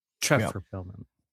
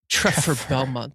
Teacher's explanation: her say Treffer with an F instead of a V